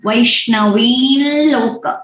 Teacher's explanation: हम जब भी अनुस्वार का ये अनुनासिक साउंड जो चांट करते टाइम बोलते हैं, वो हमें यहाँ पे नोस में प्रेशर पता चलता है। वो अगर प्रेशर आते हैं तो आपको rest assured that you are chanting it properly, otherwise you विल have to practice that अनुनासिक साउंड।